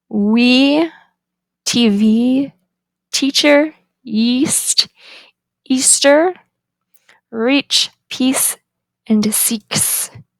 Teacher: The tongue is high, front, the lips are unrounded, and it is tense. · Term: lowercase I